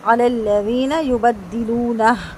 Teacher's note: ہا پہ وقف کریں گے، ہا کی آواز بھاری کر کے ادا کریں گے